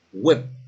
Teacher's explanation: C'est tout simplement parce que le I court, qu'on est en train de voir en ce moment-là, ben le I court, c'est un son qui se trouve entre le E et le I.